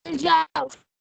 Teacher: فإذا اختلفت حرف عما يناسبه سميت لينة، مثل الجوف، الواو هنا ساكنة بعد الفتح ومخرجها شفتين وتسمى بالواو اللينة